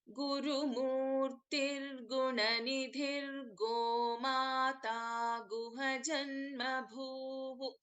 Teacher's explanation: So in that case, instead of the Visarga after Gunanidhihi, we will be chanting together. There will be no Visarga.